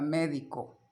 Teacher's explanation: Observen que la sílaba tónica, donde recae la mayor fuerza de pronunciación, está en la antepenúltima sílaba. Contamos: última, penúltima, antepenúltima. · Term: palabra esdrújula